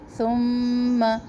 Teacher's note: میم مشدد پر ایک الف کے برابر ٹھہرنا ہے